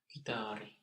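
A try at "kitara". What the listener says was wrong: So it's not, so we will keep the A as short, guitar, but we are not going to add an I there. But go through different vowels and what sticks.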